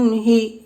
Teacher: تو ہا کے نیچے زیر ہے، زیر کو جلدی پڑھا، تھوڑا بھی نہ کیجیے، زیر کی آواز نیچے کو جاتی ہے